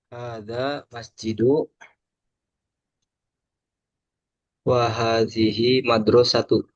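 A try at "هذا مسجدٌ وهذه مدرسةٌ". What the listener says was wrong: Kalau masjidu kurang tepat. Tambahkan tanwin. Hada masjidun. Wahadihi madrasatun. Kalau ada alif lamnya baru. Masjidu. Al madrasatu. Kalau tanpa alif lam, masjidun.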